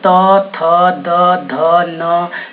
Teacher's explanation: आपका जो जीभ है वो दांत में चिपक रहा है, इसलिए इसको दंत वर्ण बोलते हैं।